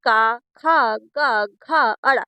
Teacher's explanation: ये का वर्ण किससे बोला जाता कंठ से